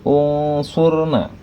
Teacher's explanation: di mana Shad Itu adalah huruf e hukum bacaan ikhfa maka Nun matinya menjadi dengung menjadi samar dan didengungkan